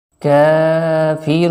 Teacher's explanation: کاف کو باریک بھی کرنا ہے اور تھوڑا سا کھینچ کے پڑھنا ہے، ایک الف کے برابر، اور یہاں پر واو ساکن سے پہلے پیش ہے، رو کو تھوڑا سا کھینچ کے پڑھیں گے اور وقت کی وجہ سے یہ نون ساکن ہو جائے گا۔